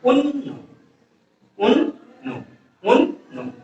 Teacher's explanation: নয়ের মাঝে অ ধ্বনিটা নেই, এজন্য উন্ন।